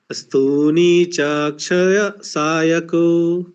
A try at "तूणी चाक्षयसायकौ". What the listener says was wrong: ये जो सा है ना, वो विसर्ग में बदल गया, तो उसको छोड़ दीजिए आप।